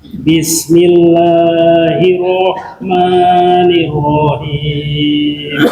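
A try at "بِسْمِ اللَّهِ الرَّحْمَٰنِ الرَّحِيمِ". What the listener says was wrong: Bismillahirrahmanirrahim. Jadi kalau tadi Bismillah itu lebih dari 2 harokat. Bismillah 2 harokat, lebih dari 2 harokat. Maka caranya Bismillahirrahmanirrahim, seperti ditekuk aja. Bismillahirrahmanirrahim.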